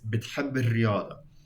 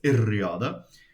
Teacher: Okay, it's not like, you can't really hear the shadda. But when you have another word next to it, that second B suddenly sort of becomes activated, and it jumps into the next syllable